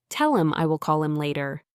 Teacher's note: It is not just the T. Sometimes H can disappear too. Like in the sentence, tell him I will call him later.